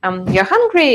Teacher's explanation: So you just say, you're hungry, and remember about rising intonation.